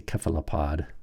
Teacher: in Latin the kappa softens, and they say cephalopod